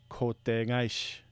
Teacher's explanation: So if you have kote and kaishi, it becomes the technique named kote gaishi. The K turns into a G in the second position, not in the initial K, but in the middle K.